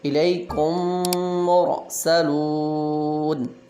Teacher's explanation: اب میم ساکن کے بعد پھر میم آیا تو ہم نے یہاں ادغام کیا